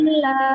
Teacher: kalau di huruf lam itu nggak boleh ditahan